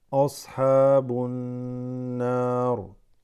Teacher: The ba assimilates, goes straight into the noon. Noon has a shadda, becomes غنة.